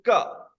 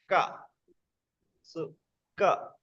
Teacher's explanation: Ka is unvoiced. Ka. So ka. There is no vocal folds vibration.